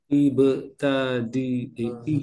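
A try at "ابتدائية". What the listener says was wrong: Nah, tanya ini kasrah. Ibtidaiyah.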